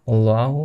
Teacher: আল্লাহটাকে মোটা করে পড়তে হবে।